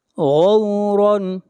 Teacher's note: غین کو موٹا پڑھا جائے گا، اس لیے کہ غین حروف مستعلیہ میں سے ہے